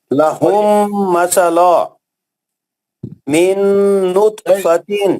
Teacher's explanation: اس میں ادغام متماثل ہے، میم ساکن کے بعد میم مشدد آتا ہے